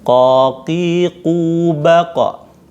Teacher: pangkal lidah ketemu dengan pangkal langit-langit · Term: qaf